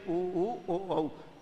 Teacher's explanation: बोलते समय ओष्ठ की आकृति गोल हो जाती है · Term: वृत्ताकार